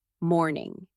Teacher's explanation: Your voice should fall gently at the end.